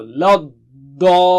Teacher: جب تک مد ہے نا وہ موٹائی اور اونچائی ویسے ہی رہے گی، بہت موٹا اور اونچا